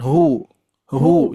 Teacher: Nah, huruf ha lebih digemakan.